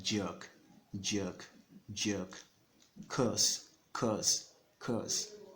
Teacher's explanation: the earth sound it's almost like the longer version of the schwa sound · It's almost like a longer version of the schwa sound. So just assume it's a longer version of the schwa sound.